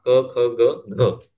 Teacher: म्हणजे क ख ग घ ङ ह्यातला चौथा क ख ग घ, तर हा आहे व्हॉइस ऍस्पिरेट